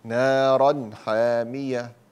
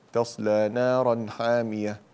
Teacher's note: لا تزيد الغنة في الإظهار، نارا حامية، فبمجرد أن يقرع اللسان مخرج النون تكون قد نطقت النون